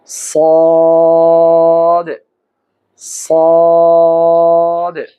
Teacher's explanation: জিহ্বার আগা সামনের উপরে নিচের দুই দাঁতের আগার সঙ্গে লাগিয়ে উচ্চারণ করতে হবে